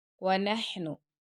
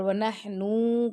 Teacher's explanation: हा आपके गले के दरमियान से आवाज आएगी